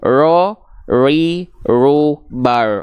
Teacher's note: Walaupun dia getarannya sedikit tapi tetap tegas lugas dan jelas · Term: takrir